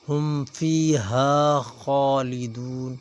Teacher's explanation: خا کے اوپر کھڑی زبر ہے اور خا موٹا حروف ہے، خا کو ایک الف کے برابر کھینچیں گے اور موٹا پڑھیں گے۔